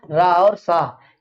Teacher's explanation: रा और सा, ये कहाँ से उच्चरित होते हैं? मूर्धा से। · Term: मूर्धन्य वर्ण